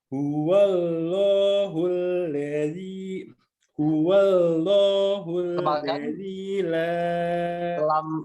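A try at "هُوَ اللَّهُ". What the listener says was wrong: Lamnya coba tebalkan. Coba lamnya, Dok, ditebalkan. Huwallah. Huwallahul.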